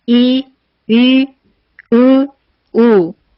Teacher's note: 턱이 조금밖에 안 내려가요. 그래서 혀의 높이가 턱과 함께 높다고 볼 수 있어요. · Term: 고모음